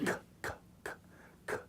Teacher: So when I talk about the unvoiced and I look at a kappa, kappa, k, k, k, k, there's very little vibration in my vocal cords. You can't even hardly sense it. K, k, k. But if I say a guttural voiced, g, g, g, see, I can hear the vibration, right?